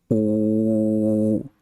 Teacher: La U española se pronuncia con la lengua muy atrás. Es casi como si quisieras tragarte la lengua. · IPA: [u]